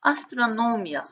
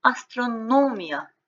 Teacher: iyadan əvvəlki hecanın üzərinə düşür. Əsasən bu iya ilə bitən sözlər bu qaydaya tabe olur. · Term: vurğu